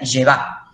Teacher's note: por convención, solemos los egiptólogos poner la sílaba tónica, el acento en la última sílaba, como hace el francés más o menos.